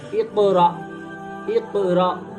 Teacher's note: حمزہ ساکن پڑھنے میں جھٹکا ہوتا ہے, ہلکا سا جھٹکا ہوتا ہے